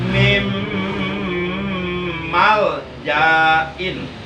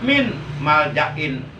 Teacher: nun matinya diidghamkan, dimasukkan ke dalam huruf mim. Tulisannya min maljain, tapi bacaannya yang benar adalah mim maljain. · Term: bacaan idgham